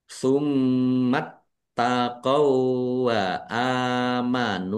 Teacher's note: alif fathah berdiri mad thobii nun dumah wau sukun juga mad thobi'i masing-masing dibaca panjang dua harakat